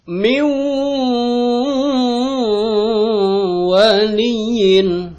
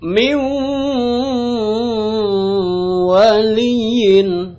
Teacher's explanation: Jadi tahan dulu wawunya, jangan langsung maju begitu aja, gitu ya. Tahan dulu, ditekan lalu ditahan. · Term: idgham bigunah